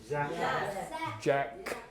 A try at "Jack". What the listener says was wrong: J. It's a J, not a Z.